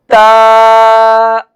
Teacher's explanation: تا کا حرف جو ہے وہ زبان کی نوک جب اوپر کے اگلے دونوں دانتوں کی جڑ والے حصے سے لگے تو تا ادا ہوتا ہے۔